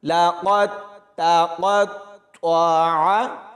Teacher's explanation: قاف کو موٹا پڑھیں گے اور طوا کے ساتھ ملائیں گے تو طوا کو بھی پر یعنی موٹا پڑھا جائے گا، اور عین کی آواز حلق سے نکلے گی، یعنی ان الفاظوں میں قاف، تا، طوا اور عین کی آواز کا خاص خیال رکھنا ہے۔